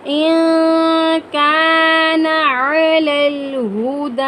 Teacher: نون ساکن کے بعد حروف اخفا میں سے کاف آیا ہے تو یہاں پر ہم اخفا کریں گے، یعنی ناک میں آواز چھپائیں گے.